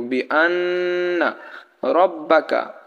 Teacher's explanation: বা মিমে যখন তাজদিদ হয় তাহলে সেখানে গুন্নাহ করতে হয় তো এখানে নুনে তাসদিদ আছে সেই কারণে আমরা নুনকে গুন্নাহ করবো